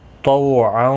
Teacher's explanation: تو مستعلیہ ہے، پر پڑھا جائے گا